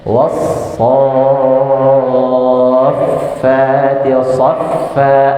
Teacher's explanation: Fa-nya juga ada hamsnya. Jadi banyak anginnya. So-nya ngeluarin angin, fa-nya juga ngeluarin. · Ketika baca so, sin ya itu harus keluar aja angin yang banyak, nggak apa-apa karena dia termasuk dalam huruf hams ya, huruf hams.